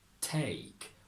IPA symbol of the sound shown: eɪ